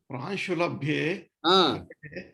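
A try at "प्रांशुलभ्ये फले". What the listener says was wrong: Phale. It is not fa. there is no letter fa in any of Indian languages. Phale. Pa pha.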